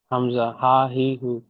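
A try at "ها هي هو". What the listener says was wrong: হামজা না। হা হা। বাইরে থেকে হা হি হু।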